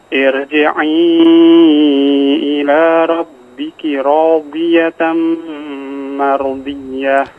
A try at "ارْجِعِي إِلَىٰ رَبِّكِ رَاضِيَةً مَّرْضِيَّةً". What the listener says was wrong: Baik, ditebalkan ya. Ada huruf ra yang perlu ditebalkan di situ ya. Kurang tebal. Irji'i, mardiyah.